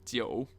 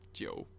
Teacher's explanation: Jiu, third tone, meaning 9.